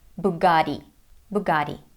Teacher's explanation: In American English, though, it sounds like Bugatti because of the American flap T, which sounds like a fast D. And in this case, the letter G is pronounced as G.